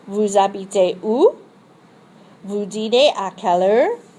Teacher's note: The voice rises on the interrogative expression.